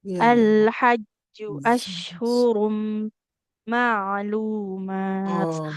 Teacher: kita ketemu tanwin di depannya mim bertasydid. Mim kan kalau bertasid harus ditahan dulu ya.